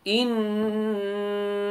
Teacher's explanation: إنا 2 seconds حرف غنة مشدد